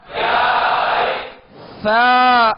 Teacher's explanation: سا کو نرمی کے ساتھ ادا کریں گے، اس میں سیٹی کی آواز پیدا نہ ہو، کیونکہ سا اور سین میں فرق کرنا ہے. اگر اس میں سیٹی کی آواز پیدا ہو گئی تو سا سین بن جائے گا اور حروف میں فرق نہیں ہوگا، جس کی وجہ سے جو ہے ناقص ادا ہوگا، حرف صحیح سے ادا نہیں ہوگا.